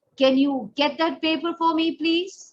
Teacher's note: when you want a response, the voice goes high towards the end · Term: upward inflection